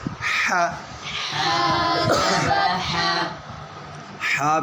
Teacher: یہ حا کہاں سے ادا ہوتی ہے؟ حلق کے درمیان سے